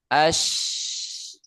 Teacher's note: untuk huruf shin tengah lidah tapi cuma mengarah saja. Ash. No, tidak nempel.